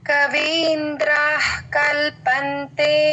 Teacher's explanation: తుహినగిరి కన్యే తులయితుం తుహినగిరి కన్యే తులయితుం కవీంద్రః కల్పంతే కవీంద్ర తర్వాత విసర్గ క ముందు విసర్గ అండి హాఫే చెప్పాలి సగం చెప్పాలి హెచ్ లాగా